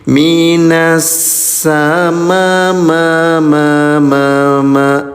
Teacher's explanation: Minasama tuh panjangkan lima ketukan.